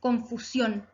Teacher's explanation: Palabra aguda, porque se acentúa en la última sílaba.